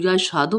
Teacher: یش ہا، دال پیش دو، یشہدو میں ہائی والی ہا ہے، اکثر حلق سے ادا ہونے والی ہا ہے